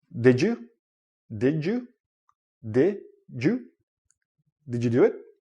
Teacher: you have a D and a Y together, it becomes like a J sound